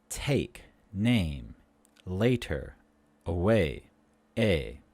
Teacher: The sound a is a mid-front tense vowel. A. Put the tongue in the middle of our mouth.